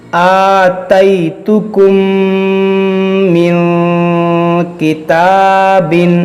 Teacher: میم ساکن کے بعد دوسری میم ہے، تو یہاں پر ادغام شفوی ہوگا یعنی غنہ ہوگا